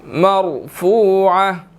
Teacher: فا کے بعد واو ہے، واو مدہ ہے. ٹھیک ہے، اس کو 1 سیکنڈ ہم کھینچ کر پڑھیں گے · را ساکن ہے لیکن پہلے زبر ہے تو اس کو بھی ہم نے موٹا پڑھنا ہے